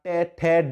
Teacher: हमारी जीभ मुड़कर हमारे दांतों से ऊपर और कंठ तालु से आगे मूर्धा में लग रही है, दांतों से ऊपर का हिस्सा और हमारे तालु से आगे का हिस्सा जो बीच का हिस्सा है ना, ये कहलाता है मूर्धा। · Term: टे वर्ग